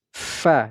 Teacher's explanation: huruf Fa kita baca dua harakat kemudian huruf Fa Ini berharakat fathah tanwin berada di akhir ayat tidak lagi dibaca fan tetapi dibaca Fa dan dipanjangkan dua harakat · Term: Mad iwad